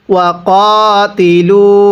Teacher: এরপরে ওয়াকাতিলু, কফের মধ্যে এক আলিফ টান দিব